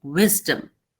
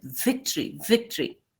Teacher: Victory is spoken with your teeth touching your lower lip